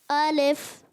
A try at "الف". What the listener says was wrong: الف نہیں, الف. نزلہ تو نہیں ہو رہا آپ کو؟ ایسا محسوس ہو رہا ہے ناک سے؟